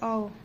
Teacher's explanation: यह भी कंठ तालव्य है और ओ जो है और औ ये दोनों कंठोष्ठ हैं। यानी कंठ और ओष्ठ दोनों के ओ बोलेंगे ना तो कंठ और लिप्स दोनों पे जो है प्रभाव पड़ता है।